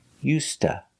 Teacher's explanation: We don't say used to, we say used to. The D is pronounced like a T, used, and to is pronounced ta. So together you hear used to.